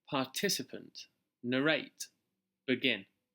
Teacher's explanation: in the next set of words the second syllable is stressed